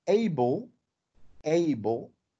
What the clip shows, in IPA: éibəl